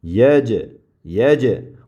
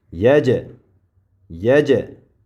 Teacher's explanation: jimda sukunlik bo'lgan paytida qalqala qilib talaffuz qilinadi.